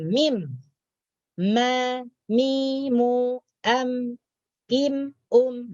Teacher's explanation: Kemudian huruf mim, ma, mi, mu, am, im, dari 2 bibir. Bukan daripada lidah, bukan daripada teka, yaitu daripada 2 bibir.